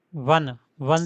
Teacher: the O in one is pronounced as W in one, a consonant sound